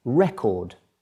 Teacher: when you put the emphasis rather on the first syllable the word is record